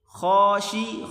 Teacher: خا کو موٹا کر کے پڑھیں گے.